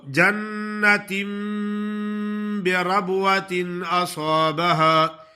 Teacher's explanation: نون ساکن اور تنوین کے بعد با کا حرف آ جائے تو نون کو میم سے بدل کر پڑھتے ہیں، اس کو اقلاب کہتے ہیں.